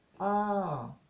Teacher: you start higher go higher and then you go down